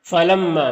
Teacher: میم مشدد ہے تو غنہ ہوگا، میم کی آواز کو ناک میں لے جا کر گنگنائیں گے ایک الف کی مقدار، اور یہاں پر الف سے پہلے میم کے اوپر زبر ہے تو الف مدہ ہوگا، الف مدہ کو ایک الف کے برابر کھینچ کر پڑھتے ہیں۔